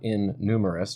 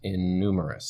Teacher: we're lengthening that n instead of repeating the sound twice